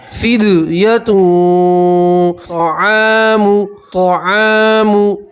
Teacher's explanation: और यहाँ तनवीन का इक्फा है, तनवीन की आवाज़ को नाक में छुपाएंगे और एक अलिफ के बराबर गुन्ना करेंगे